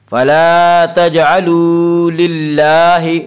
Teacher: للہ میں اللہ کا لام باریک ہوگا۔